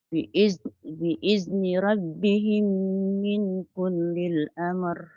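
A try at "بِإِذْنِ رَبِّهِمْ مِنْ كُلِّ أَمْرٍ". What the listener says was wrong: Hindi ito kullil. Walang lam dito. Hindi ito kullil. Kulli amr. Kulli amr. Biizni rabbihim min kulli amr.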